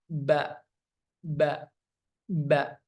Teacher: bertemunya antara kedua bibir dalam keadaan tertutup. Itu huruf ba.